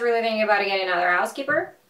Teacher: she speaks so fast and relaxed and connects everything together so it sounds like one huge word